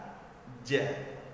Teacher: Berikut kita contohkan huruf hijaiyah jim. Huruf jim, makharijul hurufnya adalah tengah lidah kita bersentuhan dengan langit-langit bagian atas.